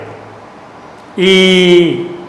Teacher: जैसे अ मुंह खुला रहेगा, ई एक मुखाकृति जैसे स्माइलिंग, हंसी जैसी हो जाएगी, मुस्कुराहट की।